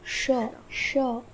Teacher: ध्यान रहे कि जब आप श इस वर्ण का उच्चारण करते हैं तब आपकी जीवा मूर्धा स्थान को आधा स्पर्श करती है, यानी कि पूर्ण रूप से स्पर्श नहीं करती है। जीवा आधा स्पर्श करती है मूर्धा स्थान को। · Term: ऊष्म वर्ण